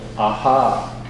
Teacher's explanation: you kind of raise the voice a little bit but you lengthen the sound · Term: emphasis